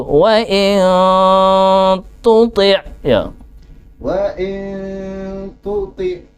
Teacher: Maka harus ada ciri tertentu, yakni mecucu walaupun to kasrah ya.